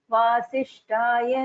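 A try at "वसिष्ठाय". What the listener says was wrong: There is only one Mahaprana here, Vasishtaya. I guess that was not seen. Otherwise, it was right.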